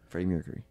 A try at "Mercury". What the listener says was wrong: you're saying mirror it's not like wrong but it's weird